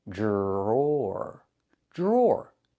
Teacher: The DR makes a J sound like in juice and jump. Plus the R, J, jr, jr.